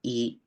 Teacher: es una vocal alta de acuerdo y es anterior y es decir que para producir la i eh nos vamos · La I, cuando uno dice I, es una vocal alta, ¿de acuerdo? Y es anterior.